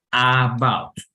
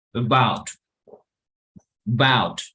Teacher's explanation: Uno de ellos es sobre todo el schwa. Entonces, el schwa que está en esta palabra nos indica que la primera sílaba es débil.